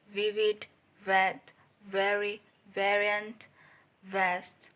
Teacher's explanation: voice labiodental fricative sound va